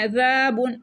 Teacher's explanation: عین کو گلے کے درمیان والے حصے سے پڑھیں گے، یہ بھی حلقی لیٹر ہے